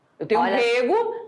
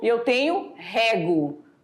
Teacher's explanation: Um sai com o E fechado, e o outro a vogal aberta